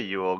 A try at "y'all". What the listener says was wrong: it's just one word. You don't have to give it two syllables. It's just y'all.